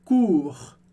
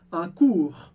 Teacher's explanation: Un cours, um curso. E no final dessa palavra a gente tem o som do R do francês, que a gente pronuncia. É o R da garganta. E é mais fácil de pronunciar ele se você olhar para cima e fizer.